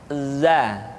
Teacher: Diucapkan dengan cara ujung lidah kita berada di antara dua gigi seri bagian atas dan bagian bawah. Za. Menyerupai dengan pengucapan huruf Z di dalam huruf Latin. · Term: huruf za